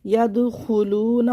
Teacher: خو کو موٹا پڑھنا ہے، واو مدہ کو کھینچنا ہے